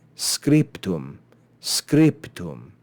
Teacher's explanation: in the previous lesson is because te is not voiced so to combine a voiced consonant with an unvoiced consonant is awkward so we remove the voice · The pe is much more like the te, makes it easier to pronounce.